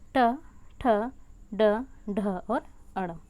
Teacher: ठीक है, जैसे अगर हम जब भी ट, ठ, ड और ढ तथा अड़ जब भी हम इन वर्णों का उच्चारण करते हैं तो हमारी जो जिह्वा है वह मुख के अगले भाग में नीचे के तालु की तरफ मुड़ जाती है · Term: मूर्धन्य व्यंजन